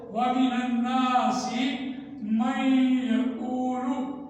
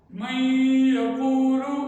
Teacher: نون ساکن کی آواز کے بعد یا آیا تو نون ساکن کی آواز آدھی بند ہو گئی ہے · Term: ادغام ناقص